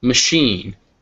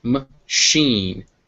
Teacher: You can hear that schwa, it's barely there.